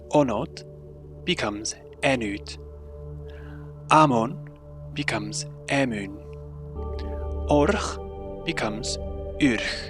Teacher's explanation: The vowel O is fronted and raised if it is in the final syllable of a word, it becomes the vowel U. Otherwise, it is fronted and becomes the vowel E.